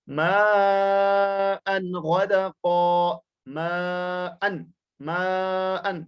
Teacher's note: اور پھر اگلی مثال ماء غدقا، ماء، ماء، بالکل ناک میں آواز کو نہیں چھپانا ہے بلکہ ظاہر کر کے پڑھنا ہے یہاں تنوین کو کیونکہ اس کے بعد غین آ رہا ہے۔